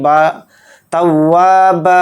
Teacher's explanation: آیت کرنے کی حالت میں ایک زبر کو ہٹا کر پڑھیں گے یعنی با توابا اس طرح سے اس میں آواز آئے گی.